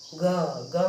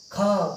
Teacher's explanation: ग में भी कम निकला ख में ज्यादा निकलता है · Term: अल्प्राण